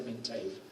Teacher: en mintave la segunda vocal es una vocal plena, forma pie por sí misma, y entonces hay una ruptura de pies, de manera que era más difícil, tardaban más tiempo en reconocer la palabra mint cuando estaba dividida entre dos pies.